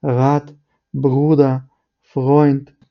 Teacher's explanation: німці вимовляють р з допомогою гортання рат бруда фрот тобто вони не використовують язик вони говорять це